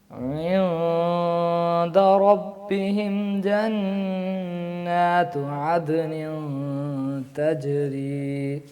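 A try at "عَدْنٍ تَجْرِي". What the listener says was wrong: یہ بھی اخفا ویسا ہی ہے. عدن تجری. آگے تا بولنی ہے نا آپ نے, تو تا کی تیاری کریں, موٹا حرف نہیں ہے, باریک حرف ہے جی.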